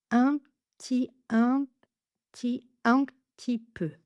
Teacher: Le P est très léger, il est presque inexistant. On ferme les lèvres comme pour le prononcer, mais il se transforme très rapidement en T. La pointe de la langue remonte derrière les dents du haut pour prononcer le T.